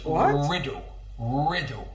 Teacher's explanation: he uses the vocalization of the dark l